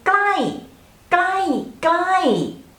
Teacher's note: pronounce ไกลใกล้ has middle tone so just ไกลไกลไกลไกล far far and when we pronounce the word ใกล้ใกล้ it has falling tone